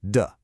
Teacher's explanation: It's a neutral tone, so it's very light, very quick, almost unstressed.